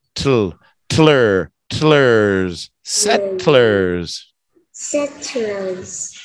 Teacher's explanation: from the T, we're gonna roll the T into an L